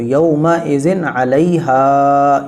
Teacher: اس میں یومئذن ایسے نہیں پڑھیں گے، کیونکہ یا نرم آواز کے ساتھ جلدی پڑھا جائے گا، میم جلدی پڑھا جائے گا، حمزہ بھی جلدی پڑھا جائے گا، اور زال 2 زیر زن، یہ بھی جلدی پڑھا جائے گا، اور عین بھی جلدی پڑھا جائے گا، لام بھی، اور ہا کھینچ کے پڑھا جائے گا، کیونکہ ہا کے ساتھ الف مل کے رہا ہے